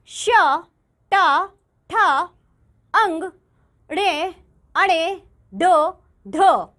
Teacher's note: जिन व्यंजनों के उच्चारण में जीभ मूर्धा यानी तालू के मध्य वाले सबसे ऊंचे भाग का स्पर्श करती है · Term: मूर्धन्य व्यंजन